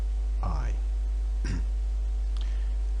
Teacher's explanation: if you shout the word I will almost certainly be using a glottal stop